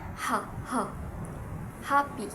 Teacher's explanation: the constriction happens at the space in our glottis, or what we call the space in our vocal tract. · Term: glottal sounds